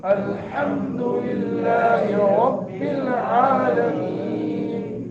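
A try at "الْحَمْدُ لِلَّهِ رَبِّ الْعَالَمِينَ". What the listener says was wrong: الحمد جو ہے نا جی, اس کو الحمدو نہیں پڑھنا, الحمدو نہیں بلکہ الحمدللہ الحمدللہ رب العالمین. الحمد کو ہاں نہ پڑھیں, الحمد ہاں پڑھیں گے نا, معنی ہے تمام تعریفیں.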